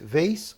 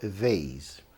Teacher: Você pode pronunciar com Z ou com S